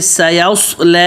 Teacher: سین پتلا, آگے یوس صاد موٹا اور یا پتلا. یوس بھی نہیں اور یس بھی نہیں.